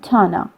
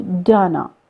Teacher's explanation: te, which was the voiceless dental or alveolar sounds, it turns to de, which is a voiced sound. When the voiceless sound turns and becomes the voiced sounds, we have lenation too.